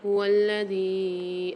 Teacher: یہاں پر دیکھیے هو الذی میں مد ہے، یا کے اوپر یہاں کھینچ کے پڑھیں گے 4 الف کی مقدار